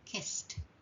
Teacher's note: A second way we can pronounce the past tense is to add a t sound. This has no extra syllable. So kiss for example just becomes kissed. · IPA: /t/